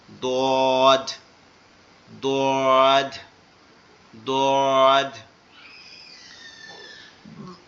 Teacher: দদটা জমিয়ে মোটা, মানে ধরে রাখতে হবে মোটা আওয়াজটা, জিহ্বার গোড়া উপরের ডান দিকের মাড়ির সাথে লাগবে, লেগে উচ্চারিত হবে দদ, দদ দদ। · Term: দোয়াদের